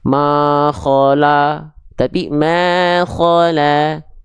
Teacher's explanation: huruf lam adalah huruf yang tipis karena vokal yang keluar vokal a